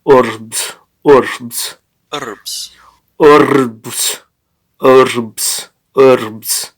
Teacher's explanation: the r is very rolled